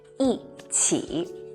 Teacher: when E is followed by the three other tones, first tone, flat, second tone, rising, third tone, down and up, E becomes the fourth falling tone.